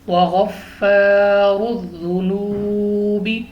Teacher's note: پہلے زبر الف مدہ کھینچ کر پڑھیں گے 2 سیکنڈ لمبا، را کے اوپر پیش را کو پر پڑھیں گے · واو ساکن سے پہلے پیش واو مدہ کھینچ کر پڑھیں گے